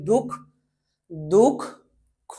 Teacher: এখানে খ এর শেষে যে অ এর উচ্চারণটা আছে এই উচ্চারণটা হবে না।